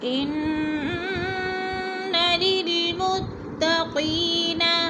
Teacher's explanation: اعوذ باللہ من الشیطان الرجیم، بسم اللہ الرحمن الرحیم۔ ان للمتقین ان کی نون مشدد ہے، سختی سے جما کر پڑھیں گے۔ متقین، قی کو تھوڑا سا کھینچنا ہے، یا مدہ ہے 2 حرکات کے برابر۔